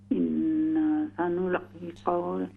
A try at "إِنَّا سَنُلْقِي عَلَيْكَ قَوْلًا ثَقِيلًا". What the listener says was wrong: پھر تھوڑا سا نا کو لمبا کر دیں.